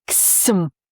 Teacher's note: if it's ksim, that is at the molar, and that means we are working the tongue. We are lifting it a little bit. The sides of the tongue are in touch with the teeth, like there's some commotion, things are happening.